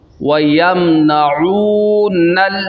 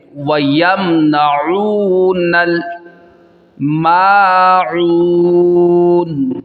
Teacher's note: نون کو لام کے ساتھ ملائیں گے